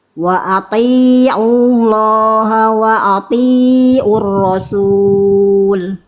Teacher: Ainnya yang ini kurang kurang ngeden jadinya kayak hamzah.